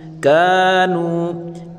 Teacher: نون واو پیش نو، واو مدہ ہے، اس کو بھی ایک الف کی مقدار کھینچ کر پڑھیں گے